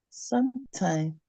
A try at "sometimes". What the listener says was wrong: There's S. So pronounce it again.